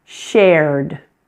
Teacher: This one has 1 syllable. It may look like it should have 2 syllables, but in fact we only pronounce the 1 vowel sound, air.